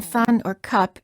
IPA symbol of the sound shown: ə